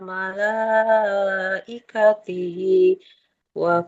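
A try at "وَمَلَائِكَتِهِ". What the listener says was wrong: Kalau dilanjut maka ini haknya jadi sukun. Wa malaikatih bukan wa malaikatihi. Coba kalau mau diwakaf jadi sukun dulu Ibu. Kullun amana billahi wa malaikatih.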